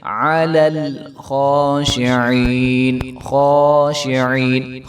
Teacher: اور خا کے اوپر جو ہے وہ کھڑا زبر ہے اور خا موٹا حرف ہے، تو اس کو جو ہے موٹا کر کے اور ایک الف کے برابر لمبا کر کے پڑھیں گے